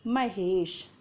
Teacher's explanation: दीर्घ आ के बाद में आई है ई और आ और ई दोनों को मिलाकर बन गया है ए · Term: गुण संधि